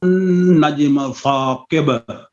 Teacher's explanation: وہاں پر سین میں سیٹی ہے, یہاں پر سا میں سیٹی نہیں ہونی چاہیے